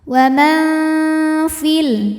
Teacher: Sebab ada ya sukun yang sebelumnya berbaris kasrah maka fi panjang dua harakat. Namun jika wasal jadi pendek fil namanya takhalus bil hadfi · Karena ada nun sukun menghadapi huruf fa, maka nun dibunyikan samar-samar, siap-siap menuju fa disertai dengung. Samar dan dengungannya sama karena fa makhrajnya pertengahan, tidak terlalu dekat, tidak terlalu jauh dari nun. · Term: ikhfa hakiki, Ikhfa awsat